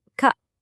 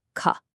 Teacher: It's the difference between a simple ka and a more breathy, forceful ka. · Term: aspiration